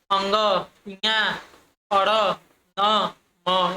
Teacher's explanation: इनके वो उच्चारण में हवा नाक से ही निकलती है। ये वर्ड जैसे होते हैं अंग, इया, अड़, न, म, ये सब पंचमाक्षर हो जाएंगे आपका अनुनासिक व्यंजन।